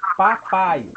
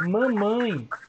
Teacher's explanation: Se você escutar mamãe, você vai sentir o seu nariz vibrando. É diferente de papai. Papai sai tudo pela boca. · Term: nasalizada